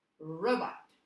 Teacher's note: when i put the stress on the first syllable the second syllable gets softer and a little bit less pronounced